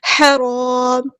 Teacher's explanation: یہاں پر لام قمریہ ہے، اس کو ہم ظاہر کریں گے، ہا ہمارا وسطی ہے لیکن مڈل تھروٹ سے ادا ہوگا